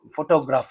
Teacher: only the first syllable receives the stress but not the second one